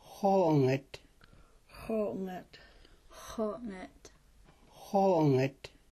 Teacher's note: The back X with a raised W is produced the same as a back X, but with the lips rounded